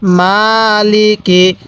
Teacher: মায়ের মধ্যে এক আলিফ টান দিব, এই লাম এবং কাফের মধ্যে টান দিব না